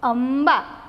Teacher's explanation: મનો જે મ અનુનાસિક મૂક્યો છે તેનો ઉચ્ચાર મ જ થશે